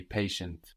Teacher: the ti of patient that sounds sh in English here it sounds like an s in French TI sounds like SI there so how would that be patient